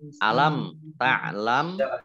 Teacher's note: mim sukun bertemu dengan huruf ta Bacaan idhar syafawi dibaca jelas